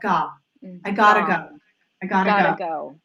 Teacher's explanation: there is no lip rounding at all